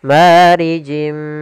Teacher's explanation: Kemudian marijim mi sama di sini ada kasratain bertemu dengan huruf mim yaitu idgam bighunah. Kita masukkan lagi tanwinnya ke huruf mim dan ditahan gunahnya.